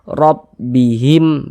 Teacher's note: Kemudian di sini huruf ra memiliki harokat fathah, memiliki tanda baca fathah, maka huruf ra dibaca tabkhim, baca tebal, sehingga pangkal lisan kita naik terangkat ke atas ketika kita mengucapkannya. Tebalkan huruf ra-nya.